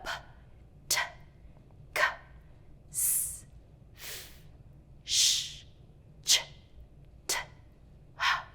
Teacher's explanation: those are the sounds that are voiceless. And notice how quiet they were. They were really just about airflow coming out.